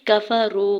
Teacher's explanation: کفرو، کاف کے زبر کو فا کے زبر کو بغیر کھینچے ہوئے ادا کریں گے، واو ساکن سے پہلے را کے اوپر پیش ہے اور واو ساکن کے اوپر مد منفصل بھی ہے، 4 سے 5 حرکت کھینچ کے ادا کریں گے